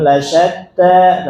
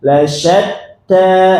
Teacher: lasyatta. Nah, taknya harus tasydid, harus ada hentakan, jangan lasyatta, tapi lasyatta.